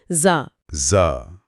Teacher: زا نرمی سے ادا ہوتا ہے، زبان کی نوک اوپر کے دانتوں کے کنارے سے زا۔ زا میں ایک سیٹی جیسی آواز ہے، زا۔